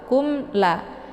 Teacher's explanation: Cara bacanya jelas bunyi mimnya, yaitu ditekan k-nya, kemudian mimnya dibaca jelas, langsung masuk ke huruf la. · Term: idhar syafawi